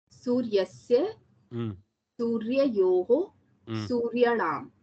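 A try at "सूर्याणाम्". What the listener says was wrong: Suryanam. Dirgha there. Suryanam. Well done.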